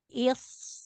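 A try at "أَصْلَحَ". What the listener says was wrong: Jangan buru-buru ya. Islaha. Jangan rapat bibir giginya.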